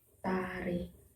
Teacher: Yang selanjutnya konsonan D dan T adalah konsonan hambat alveolar, konsonan yang dihasilkan dengan menempelkan ujung lidah pada gusi. Kemudian udara dari paru-paru diletupkan sambil melepaskan ujung lidah dari gusi